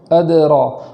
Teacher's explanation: آگے ہے وما ادراک ما الحطامہ، وما پر مد کرنے کے بعد حمزہ کو خوب جھٹکے سے ادا کرنا ہے، اس طریقے سے وما اگر ہم جھٹکا نہیں کریں گے تو حمزہ کا وجود نہیں ہوگا۔ اور آگے ادراک میں دال کو قلقلہ کے ساتھ پڑھیں گے، آواز کو لوٹانا ہے